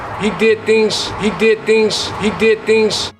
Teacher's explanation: the z sounds at the end of words turn into more of an s sound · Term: devoicing